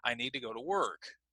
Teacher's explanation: word so for example I need to go to work and we would use a falling intonation all right so work would be the focus